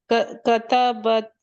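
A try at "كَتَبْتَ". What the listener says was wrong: Third letter को सुकून कीजिए, वाह को सुकून कर दें।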